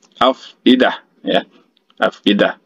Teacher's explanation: huruf fa-nya itu harus ada keluar angin sedikit dari kedua belah bibir kita